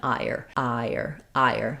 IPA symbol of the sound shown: aɪɚ